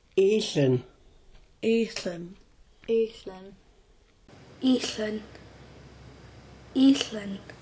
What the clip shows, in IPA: ʔíɬən